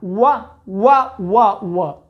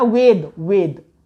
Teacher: north Indian लोगों को यह ध्यान रखना है कि उनको व को ब नहीं बोलना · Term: वकार